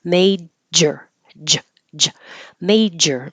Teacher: the tongue does have to touch the top of the mouth and pull down quickly and release the pressure that's been building up behind. So when you release the air, you create sound at the same time.